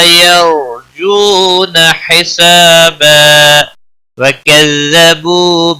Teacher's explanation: ملانے کی صورت میں ادغام باگنہ ہوگا